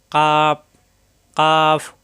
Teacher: কাফ জিহ্বার গোড়া থেকে একটু আগে বাড়িয়ে উপরে তালুতে লাগবে